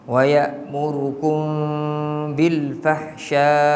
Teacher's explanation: Bil fahsya boleh baca 4 harakat, boleh baca 5 harakat, boleh baca 6 harakat kat situ. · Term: mat wajib